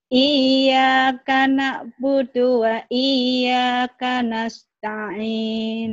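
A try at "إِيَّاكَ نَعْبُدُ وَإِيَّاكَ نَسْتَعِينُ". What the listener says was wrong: Budunya jangan buru-buru. Tadi ada budu yang panjang, ada ini terlalu terburu-buru. Iyyaka na'budu wa iyyaka na'budu wa iyyaka nasta'in.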